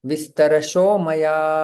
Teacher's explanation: यहां पर संधि होती है विसर्ग का ओ में परिवर्तन